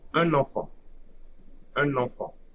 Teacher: So the liaison will be between N of the first word and EN of the second word. · So here the article ends with the final silent N. So it will create an abstract N at the beginning of the second word. And the second word first syllable is EN.